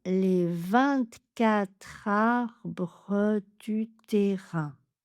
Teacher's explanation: j'ai ajouté un petit E neutre pour le rythme